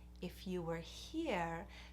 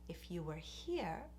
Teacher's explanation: and the word here is stretched out and it goes up